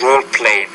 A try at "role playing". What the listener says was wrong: I want to say children will enjoy role plays. Role plays. You had some trouble with the R sound.